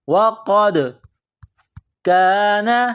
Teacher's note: دال کے اوپر قلقلہ کرنی ہے۔